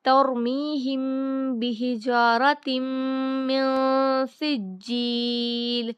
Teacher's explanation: یہاں پر اخفا ہوگا کیونکہ نون ساکن کے بعد سین آیا ہے اور سین ہے اخفا کا حروف، تو یہاں پر نون کی آواز کو ناک میں چھپا کر پڑھیں گے۔ ترمیہم بحجارۃ من سجیل، میم پر غنہ ہوگا، شدہ آیا ہے، تو جب نون پر مشدد ہو اور میم پر مشدد ہو تو غنہ کے ساتھ پڑھا جاتا ہے۔